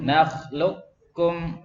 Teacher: Qafnya hilang, masuk semuanya ya. Qafnya hilang, masuk ke kaf ya, masuk ke rumahnya kaf tanpa sisa. · Semua thariqah Imam Hafiz an Asim bacanya dengan idgham kamil ya, masuk secara keseluruhan, tidak ada sisa sama sekali.